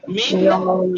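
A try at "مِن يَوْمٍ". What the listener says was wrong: यौमिन और नून और या दो मुतकारी देखिए, मिन यौमिन मत पढ़िएगा, इदगाम वाजिब है तो मैं वैसे ही पढ़ के दिखा रहा हूँ। तो इदगाम नून का या में इदगाम वाजिब है, मिन यौमिन ठीक है नहीं?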